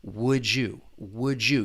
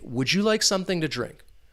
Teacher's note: That final D in would, that D sound, once again, we can blend it with that beginning Y in U. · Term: assimilation